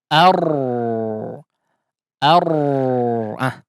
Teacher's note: Dikatakan sehingga tidak dikatakan cadel juga ya. Jadi ar ar getarannya hanya di awal saja